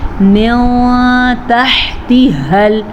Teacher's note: جنات تجری من تحتها من تحتها، نون ساکن کے بعد تا ہے تو اخفاء کا قاعدہ ہوگا